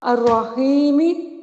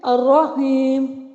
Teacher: یعنی میم متحرک تھا اور وقتی طور پر وقف کی صورت میں یہ ساکن ہو گیا عارضی سکون کی وجہ سے۔